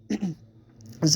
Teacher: زا کے اوپر آپ نے سیٹی بجانی ہے، سختی کرنی ہے، لمبا نہیں کرنا کیونکہ یہ حروف صفیریہ میں سے پہلا حروف ہے زا۔